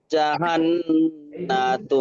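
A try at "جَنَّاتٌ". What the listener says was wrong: লাহুম জান্নাতু, জান্নাতুন, জাহান নয়, জান্নাত।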